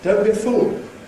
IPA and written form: ˌdəʊnt bjə ˈfuːl (don't be a fool)